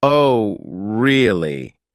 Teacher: if they say, Oh, really? with a flat tone, they might be skeptical or even a bit sarcastic